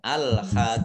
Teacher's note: Bertemu dengan huruf terakhir yang dibaca sukun karena wakof, maka menjadi mat arif lis sukun, dibaca panjang 2, 4 atau 6 harokat boleh